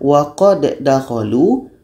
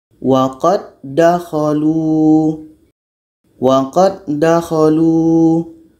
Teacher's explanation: Secara proses membacanya hukumnya adalah idgham kamil. Jadi bunyi da pertama masuk kepada da yang kedua.